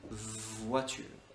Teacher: Pour le son V, comme dans voiture, on a besoin de nos cordes vocales. En fait, tu parles et on dit voiture.